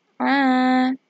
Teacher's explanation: huruf Ain dibaca panjang dua harakat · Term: Mad Thobi'i